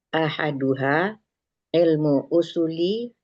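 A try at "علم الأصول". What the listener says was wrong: Jangan, masih tinggal itu ilmul. Ulang.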